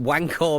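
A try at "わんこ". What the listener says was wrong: You're pronouncing it wrong, though. It's not wank, it's wanko. Like wankosoba. Wankosoba, right?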